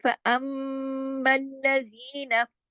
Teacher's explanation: मीम पे तशदीद हो गई, मीम पे बड़ा गुन्ना हो गया